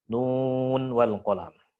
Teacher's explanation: ingat kadar nun di situ dia izhar pada posisi derajat gunnah yang nakisah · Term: izhar riwayah